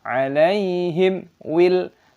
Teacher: Mim sukun bertemu dengan wawu. Izhar Syafawi terbaca jelas. Jangan dinasalisasi